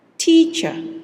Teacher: the stress is in the first syllable, teacher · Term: word stress